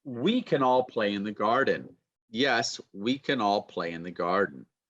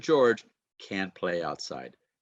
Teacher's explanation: Can changes to kun, and can't, funny enough, changes to can.